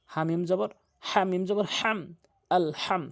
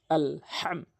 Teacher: হাটি হলকের মাঝখান থেকে আলহাম